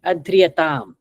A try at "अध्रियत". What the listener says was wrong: Adriyata, not tam.